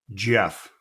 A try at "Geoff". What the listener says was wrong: That was a little too soft. It's a little sharper of a J. It's a medium soft.